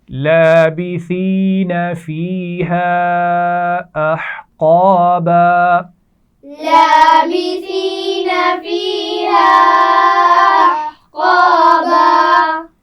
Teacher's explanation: فیہا یا مدہ ہے اور الف مدہ بھی ہے، اور چھوٹی مد ہے تو اس کو ہم کھینچ کر پڑھیں گے